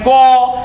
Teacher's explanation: अगर आप बोलते हैं को तो ये कंठ से निकलता है।